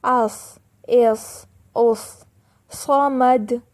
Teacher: سین سے بھاری آواز صاد کی ہے